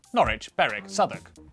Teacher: W, at the start of the final syllable, is silent.